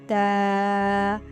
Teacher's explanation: دو لفظ ہیں۔ تا میں زبان کی نوک اور اوپر والے سامنے کے جو دو دانت ہیں ان کی جڑ سے